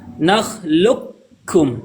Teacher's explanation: Ada versi kamil, ada versi naqis. Kamil maksudnya murni kaf yang terdengar, tidak ada qaf sama sekali, walaupun sedikit tidak ada jenis qaf terdiri, suara qaf tidak ada. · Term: idgham kamil